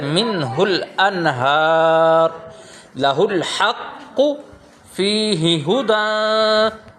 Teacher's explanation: number 2، اگر ہائے ضمیر سے پہلے اور بعد والے دونوں حروف متحرک نہ ہوں بلکہ یہ دونوں یا ان میں سے کوئی ایک حرف ساکن ہو تو ہائے ضمیر بغیر کھینچے پڑھی جائے گی